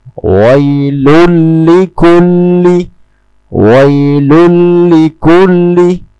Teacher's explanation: Baiklah, ada hukum membaca Idgham Bila Ghunnah dalam frasa " wailun likulli". Cara membacanya adalah tanpa bersenandung dan dengan menghilangkan bunyi 'nun' dalam tanwin. Wailun langsung menuju ke 'lam'. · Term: idgham bila gunnah